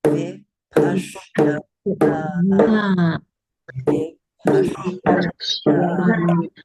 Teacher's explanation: This particular S is actually a palatal S. So to be absolutely correct, you would say shra.